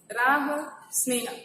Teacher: ह जो है वो सघोष है, पर शब्द के अंत में सामान्य रूप से इसका अघोष उच्चारण होता है।